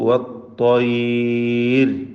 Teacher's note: വത്ത്വയ്ർ എന്ന് പറയുമ്പോൾ ത്വാഇന് തഫ്ഖീമാണ്, തടിപ്പിച്ച് ത്വാ ഉച്ചരിക്കുകയും റാഇന് തർക്കീഖ് കൊടുക്കണം എന്നതും പ്രത്യേകം ശ്രദ്ധിക്കുക.